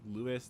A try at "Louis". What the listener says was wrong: I think it's Louis. Yeah, the S is silent.